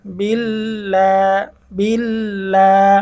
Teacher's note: এই লফজ আল্লাহর লামটাকে এখানে আমরা চিকন করে পড়ব।